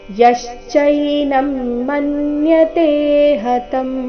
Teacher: ಯಶ್ಚೈನಂ ಯ ಮೇಲೆ ಆಘಾತ